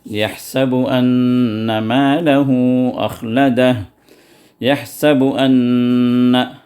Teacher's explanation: اس میں دو نون ہیں، الف نے حمزہ نون نون، تو پہلا جو نون ہے وہ نون دوسرے نون میں پوری طرح داخل ہو گیا، اور نون کا ساؤنڈ بھی پوری طرح اس کے اندر مکمل ہے ، تو یہ ادغام مع الغنہ الکاملہ یا مع الغنہ التامہ۔